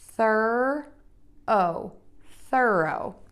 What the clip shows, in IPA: θɜroʊ